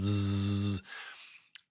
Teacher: So it's s with vibration. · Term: Z sound